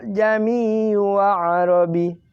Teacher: Sekarang tasghil. Ini adalah meringankan bunyi hamzah yang kedua.